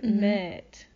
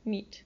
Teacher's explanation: goes from fairly open and long, kind of a long sound, met, and to a more closed sound that's shorter, meet.